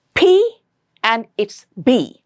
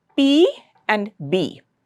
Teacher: when you produce these sounds the air will have to come out of your mouth with a burst. It has to be released suddenly and with a burst.